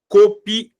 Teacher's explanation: Aqui no caso, ó, a vogal mais forte é o A. Copiado não tem acento. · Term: sílaba tônica